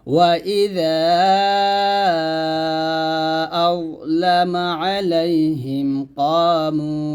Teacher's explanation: আমরা যটা এমনভাবে উচ্চারণ করব যেন এটা জাল না হয়ে যায়, য মোটা করে উচ্চারণ করতে হবে